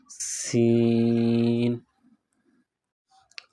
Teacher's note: اس حرف کی ادائیگی میں سیٹی کی آواز پیدا کریں گے